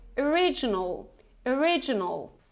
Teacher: we have this schwa sound at the beginning